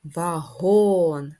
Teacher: голосний г приголосний твердий о голосний н приголосний твердий наголос вагон наголос на другий склад